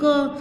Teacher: जैसे क बोल रहे हैं तो क बोलते हुए हमारी अ की आवाज़ जरूर आती है, क, तो इसलिए हम उसके नीचे ये हलंत लगाते हैं।